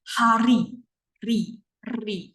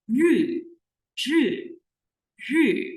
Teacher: Kayak misalnya nih, hari, ri, ri, ada rasa getarannya. Tapi kalau dalam bahasa Mandarin, R-nya itu tidak ada getarannya.